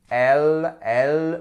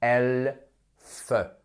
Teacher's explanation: Mais par contre, si je dis L, vous mettez votre main ici et vous voyez que les cordes vocales, elles vibrent